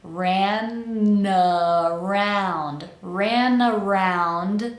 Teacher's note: we're going to connect that n of ran to the vowel of the next word which is schah uh round so we have a short little